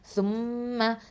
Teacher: இங்கே மீம் முஷத்ததா இருக்கிறதுனால என்ன பண்ணுறோம்? அக்மல் குன்னா கொடுக்கணும், பரிபூரணமாக மிக பரிபூரண குன்னா கொடுக்கணும்.